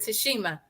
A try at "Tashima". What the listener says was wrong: It's Tashima, no H. We always add the H in there.